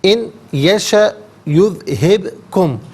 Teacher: ان میں نون ساکن ہے، اسے یشا کی یا کے ساتھ ملائیں گے، اور نون کی آواز یا کی آواز کو غننے کے ساتھ ادا کریں گے۔ یہاں یرملون کا جو قاعدہ ہے وہ اپلائی کیا جائے گا۔